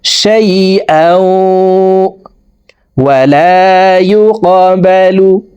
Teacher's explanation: তানউইনের পরে ইদগামে বা গুন্নার 4 হরফের একটি হরফ ওয়াও আসছে। এই কারণে এই তানউইনওয়ালা হামজাটি অর্থাৎ 2 জবরওয়ালা হামজাটি তাসদিদওয়ালা ওয়ার সাথে গুন্নার সহিত মিলাইয়া পড়ব। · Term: ইদগামে বা গুন্নাহ